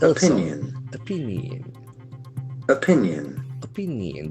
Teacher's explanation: There are three syllables and the accent for the second syllable.